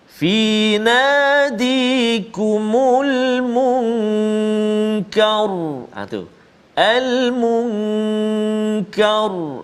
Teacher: Maka kita lihat huruf sebelumnya, iaitulah huruf kaf berbaris atas fathah, maka ra tu dia bunyi tebal. Fi nadikumul munkar, tu al munkar, tebal bunyi dia.